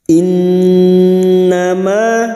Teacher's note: fathah diikuti alif 2 harokat kita panjangkan mad tabi'i